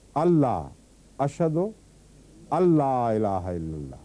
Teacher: नून के बाद अगर लाम आ जाए तो फिर भी नून गायब हो जाता है।